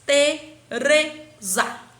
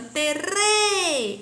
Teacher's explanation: É sílaba pronunciada com mais intensidade, eu coloco o re. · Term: sílaba tônica